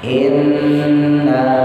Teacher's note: panjang ya, nunnya tasdid ditahan